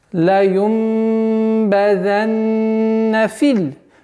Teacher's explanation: удлинение аннулируется и с огласовки мы переходим на лям